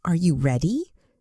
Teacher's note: your voice naturally goes up at the end because it's a question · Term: intonation